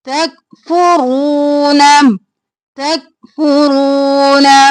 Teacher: काफ साकिन और फुरू, फू जल्दी से, रो मोटा और खींचेंगे, रू और ना जल्दी से।